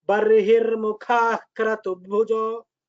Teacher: when Mukha Visarga is there after Ka, you have to pronounce half Visarga.